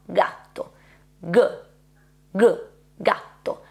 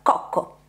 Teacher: la g è la corrispondente sonora della c. Comporta una vibrazione delle corde vocali e questa è tutta la differenza fra questi due suoni.